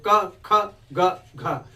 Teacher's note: क को हम कैसे बोल रहे हैं? कंठ के माध्यम से। क गले से आवाज आ रही है